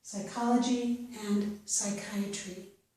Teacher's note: In these two words, we do not pronounce the P sound, so we pronounce these as if they start with the S or S sound